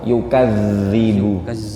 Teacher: Jadi huruf zal itu lidahnya keluar. Yukadzibu. Lidahnya keluar ya Pak.